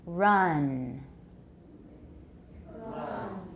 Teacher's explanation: Your tongue needs to be lower. It's not ren. Mouth is wider open, and the vowel is longer.